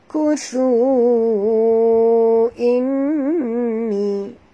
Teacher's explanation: Wajib dengung ada tasydid di atas nun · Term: wajib al-gunah